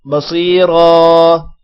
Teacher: بصیرا صاد موٹا ہوگا، صاد کے بعد یا ہے، تھوڑا سا لمبا کریں گے، را کو موٹا کریں گے، را کے بعد الف ہے، تھوڑا سا لمبا بھی کریں گے۔